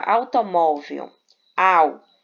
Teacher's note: Primeiro vem o som forte, que é da vogal, e depois o som fraco, que é da semivogal. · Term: ditongo decrescente